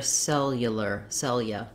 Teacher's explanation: we're stressing on that first syllable cell so we don't say cell you lear but rather cellular cellular · we have the glide ya and this letter u says the uh sound here that's because we're stressing on that first syllable cell so we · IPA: /ˈsɛljələr/